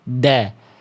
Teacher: lihat ujung lidah nempel ke pangkal gigi seri atas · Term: huruf dal